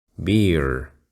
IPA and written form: bɪər (beer)